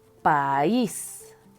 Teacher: la vocal débil tiene un acento y eso hace que esta sílaba suene más fuerte. Por lo tanto, se rompe el diptongo y se separa silábicamente. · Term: hiato